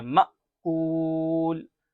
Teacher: یہ حمزہ کے اوپر جزم ہے اس لیے جزم یہ حمزہ کو جھٹکا مار کے پڑھتے ہیں، مأکول۔ اب دیکھیے کاف واو پیش کو ہے، واو ساکن سے پہلے کیا ہے پیش ہے اس لیے یہاں واو مدہ ہو رہا ہے۔